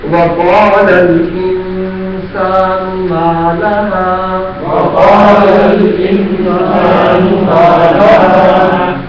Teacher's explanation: قال میں قاف حلق سے آئے گا. انسان یہاں اخفا ہوگا غنہ کے ساتھ